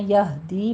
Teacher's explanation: ہمس نہیں آنی چاہیے، ہا پڑھنا ہے اقص سے حلق سے۔ یہدی دی میں یا مدہ ہے، 2 کاؤنٹ کرنے ہیں۔